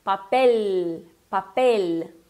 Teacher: Tem que ter aquele L com a língua dá uma subidinha ali